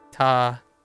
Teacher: So just dropping the T sounds. You add the T sounds back in Japanese, although kind of slightly different than a T from British. It's like less sharp than a British T